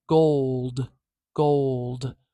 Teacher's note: Ol, and then d, gold, gold. That ol and d are immediately next to each other. There is no sound between them at all.